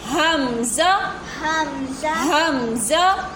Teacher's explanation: हमज़ा हलक के नीचे वाले हिस्से से अदा होता है